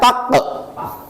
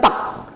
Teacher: Contoh taq ya kita pantulkan taq ya tidak dikatakan tak tapi taq ada pantulan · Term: qalqalah sugra